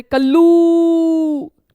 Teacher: अब प्लुत स्वर कब बनते हैं, जब हम किसी को पुकारते हैं, जैसे कल्लू, तो ऊ स्वर को हमने थोड़ा दीर्घ मात्रा से भी अधिक खींच दिया